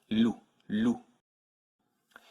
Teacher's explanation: the French one only uses the front of the tongue L the tip of your tongue should touch just behind your front teeth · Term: French L